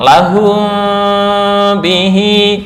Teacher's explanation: ini kan mim sukun yang bertemu ba bukan tertutup 100% tapi remang-remang.